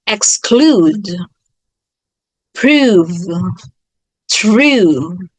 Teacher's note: the u sound as in exclude should be longer